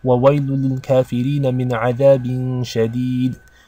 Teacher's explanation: there is This short vowel on the bottom Which is not read because when you stop you stop on the sukoon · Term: sukun